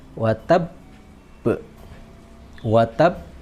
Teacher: Perhatikan di situ ada tasydidnya dan kemudian disukun, maka dia ditekan watab, watab, disukun terlebih dahulu, kemudian dipantulkan. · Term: qalqalah